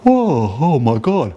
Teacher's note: You don't hear any of that nasally resonance. You hear a low tone like this. And what's happening when I want to make that low tone and sound like I have a cold, I am acting like my nose is full of junk, like when I have a cold, right?